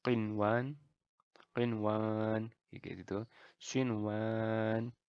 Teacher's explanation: ya Adun ya kita tidak ada melebur tidak ada dengan jadi ini dibaca jelas selayaknya izhar biasa semacam itu jadi tidak ada leburan